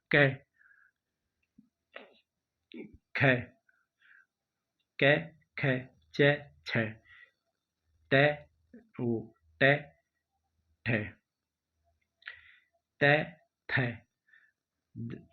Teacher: वे व्यंजन जिनका उच्चारण करते समय स्वर तंत्री में नाद या कंपन उत्पन्न नहीं होता है वे अघोष अघोष कहलाते हैं